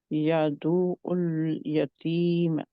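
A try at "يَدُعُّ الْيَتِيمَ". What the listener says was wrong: यतीम, यादुल यतीम, यादुल यतीम। और उल लाम के मखरज में रहना है, उल नहीं करना, ठीक है? यदु उल नहीं करना, क्योंकि उल कर दिया तो क्या होगा? हिल जाएगा लाम का मखरज।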